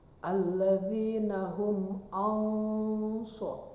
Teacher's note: ada nun mati bertemu dengan huruf shod, dibacanya samar-samar, hukumnya ikhfa.